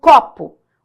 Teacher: O có é mais forte, esse pô é fraquinha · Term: sílaba tônica